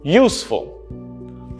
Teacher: I'm stressing on use, not full. Useful. Not useful.